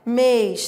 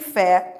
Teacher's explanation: mês tem timbre fechado e fé tem timbre aberto. E não importa, mesmo tendo timbre fechado, mês é tônico.